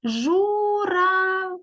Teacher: слово складається з трьох складів і останній приголосний м'який